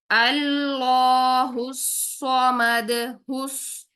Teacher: दाल को साकिन यानी सुकून आरजी करते हुए हिलाया है